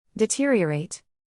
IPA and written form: dɪˈtɪriəˌreɪt (deteriorate)